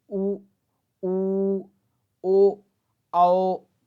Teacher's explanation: वृताकार स्वर यानी जिनके उच्चारण में हमारे होठ गोल हो जाते हैं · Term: वृत्ताकार स्वर